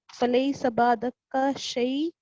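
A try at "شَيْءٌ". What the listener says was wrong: शै ही है, सिर्फ शै। आप देखें, या तो आप तनवीन पढ़ें या आप इस पे स्टॉप करें,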